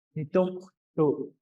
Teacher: What will help with that glottal stop is kind of like almost like the sound of H. You breathe out at nitom. you kind of breathe out. That gives you the glottal stop.